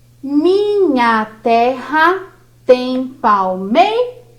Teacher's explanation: a sílaba tônica aqui em palmeiras é meiras